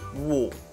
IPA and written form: wɔ́ː (Water)